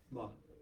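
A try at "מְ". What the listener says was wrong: Just m.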